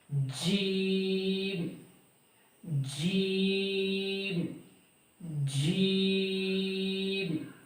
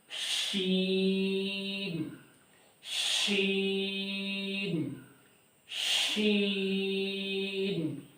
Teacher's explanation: जब ज़बान का वस्त ऊपर के सख्त तालु से लगता है तो ये हरूफ अदा होते हैं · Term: हरूफ शजरिया